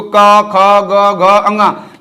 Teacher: आप बोल रहे हैं जीभ आपका ऊपर है, और किससे, कंठ से, यानी गले से आवाज निकल रही है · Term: कंठ व्यंजन